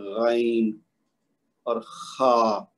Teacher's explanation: پہلا حصہ ابتدائی حلق کہلائے گا، پھر وسط حلق، اور پھر آخری حصہ جو ہے اختتامی۔ تو یہ غین اور خا جو ہیں یہ مخرج اس کا جو ہے وہ ابتدائی حلق ہے، یعنی منہ کی طرف، تو جو کہ منہ کی جانب ہوتا ہے، اور اس کی ادائیگی میں ہوا کا دباؤ تالو کی طرف ہوتا ہے۔